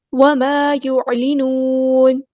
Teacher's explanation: عین کو مستحل لیکن مڈل تھروٹ سے ادا کریں گے